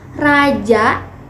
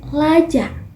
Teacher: bunyi R dilapalkan menjadi l misalnya Raja diucapkan menjadi Laja · kurang sempurna mengucapkan kata-kata sehingga bunyi R dilafalkan menjadi L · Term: cadel